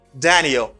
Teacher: It's a falling intonation. Why? It's because I lower my voice at the end of this.